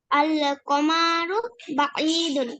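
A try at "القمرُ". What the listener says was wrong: নাই, আল কমা টান হবে না, আল কমারু,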